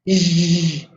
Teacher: You notice there is vibration in your voice box.